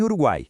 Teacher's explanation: o som fraco u, o som forte a e o som fraco I, todos juntos na sílaba guai. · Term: tritongo